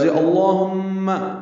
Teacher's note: لفظ اللہم، لام اسم جلالہ پر پڑھیں گے، شروع میں زبر لگائی گئی ہے، ہم میں میم مشدد ہے، اس میں غنہ ہے